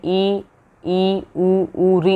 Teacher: संवृत स्वर कौन से होते हैं, मुख ना के बराबर खुले, जिनके अंदर मुंह को ना के बराबर खुला, जैसे ई बोलते हैं तो ई में क्या हो रहा है, मुंह हमारा ना के बराबर खुलता है, तो वो हमारा क्या है, संवृत स्वर है · ई, ऊ, री, इनमें मुख ना के बराबर खुलता है, तो ये हो गए संवृत स्वर।